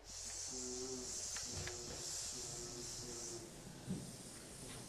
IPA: sszzsszz